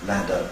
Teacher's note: we see full vibration of the vocal folds during the hold phase of the word ladder. However, if we take dad as a one-word utterance on its own, then you don't get vibration of the vocal folds throughout the hold phase of the D at either end. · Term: fully voiced